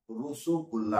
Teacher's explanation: बांगला भाषी इसका उच्चारण करेंगे तो इसमें ओ का उच्चारण करते हर ण के साथ रोसो कुला बोलते ठीक है इसी तरह